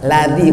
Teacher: ladzi ujung lidah, dzal bukan za